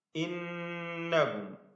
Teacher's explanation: ഇന്നഹും. വീണ്ടും നൂൻ മുഷദ്ദദ മണിക്കുക.